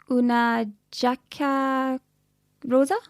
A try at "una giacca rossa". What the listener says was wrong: Now, careful, it's not rosa because that would be pink. Rossa. Double S sound. Rossa. Una giacca rossa.